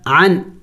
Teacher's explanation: اخفا نہیں کریں گے، نون کو ظاہر کر کے پڑھیں گے، عین نون زبر عن نہیں پڑھیں گے، اخفا نہیں کریں گے بلکہ نون کو ظاہر پڑھیں گے۔